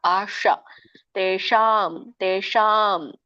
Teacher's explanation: ಇದನ್ನ ನೀವು ನಮ್ದು ನಾಲ್ಗೆ ರೋಲ್ ಮಾಡಿಕೊಂಡು ಮೇಲೆ ಇದಕ್ಕೆ ಅಂಗಳಕ್ಕೆ ಹತ್ತಬೇಕು